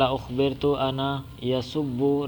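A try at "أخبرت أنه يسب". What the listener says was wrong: انہ، انا نہیں، مجھے بتایا گیا، مجھے خبر ملی ہے کہ وہ ابو جہل گالیاں نکالتا ہے رسول اللہ صلی اللہ علیہ وسلم کو۔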